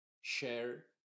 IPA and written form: ʃɛər (Share)